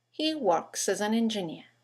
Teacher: three words that begin with a vowel as an an engineer in Connected speech they all run into each other